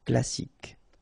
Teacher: You don't insist on the final E, so you get K as the last sound.